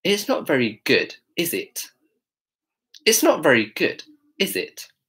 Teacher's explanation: she really pronounces the T at the end of is it.